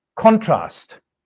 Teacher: if we stress the first syllable in this word, then it is a noun